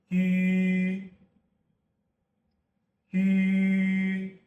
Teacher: The vowel ü is a front high rounded vowel. To make it, no jaw drop.